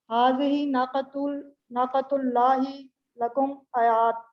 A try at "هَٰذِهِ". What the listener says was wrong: اب دیکھنا یہ نا پڑھنا آپ نے، اس کو اب نا نہیں پڑھ رہی. اس پر الف ہے نا، الف کو الف پڑھیں.